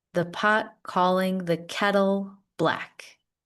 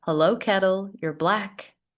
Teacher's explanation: we're using a flap T for kettle instead of kettle. Make a D sound instead of a T. This is discussed in another video as well, if you want to watch more about flap T.